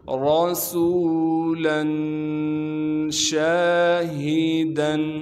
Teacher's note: شین کے بعد الف مدہ ہونے کی وجہ سے شین کو 1 الف کے مقدار کھینچیں گے۔ ہا کو سینے سے صاف کر کے ادا کریں گے۔ دال پر اخفا یا غنہ نہیں کیا جائے گا۔